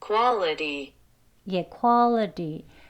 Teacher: 드 소리와 르 소리가 같이 합쳐진 소리로 들려요.